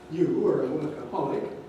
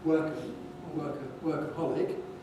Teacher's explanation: You are a workaholic, 4 rise on holic. And for those of you who know about head tones, the thing on work, instead of being level, is falling, as typically happens before a 4 rise.